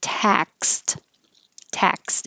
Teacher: The X is really a K and an S combination, and the D sounds like a T, and the vowel is A. So open and keep your lips back.